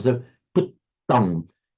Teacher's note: with the double T very distinctly held to make it a heavy syllable